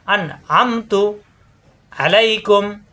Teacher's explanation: নুন সাকিনের পরে আইন স্পষ্ট হবে, গুণ্য হবে না